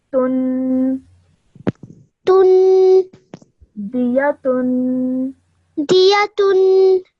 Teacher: But remember, this ta also has a tanween on it, and tanween also produces a 2-second nasal sound. So, tun.